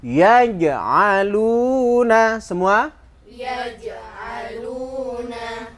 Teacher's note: Jim di tengah lidah ya, harus ditekan. Tidak boleh desis.